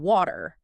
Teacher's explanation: you are trying to pronounce a crisp, aspirated T saying water